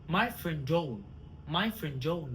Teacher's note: We drop the D of friend.